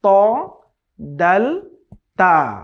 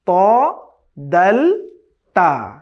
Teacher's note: 11তম জায়গা হচ্ছে জিহ্বার আগা সামনের উপরের দুই দাঁতের গোড়ার সঙ্গে লাগিয়ে। জিহ্বার যে আগা আছে, টিপ অফ আওয়ার টাং, এটাকে সামনের উপরে দুই দাঁতের গোড়ার সঙ্গে লাগাতে হবে।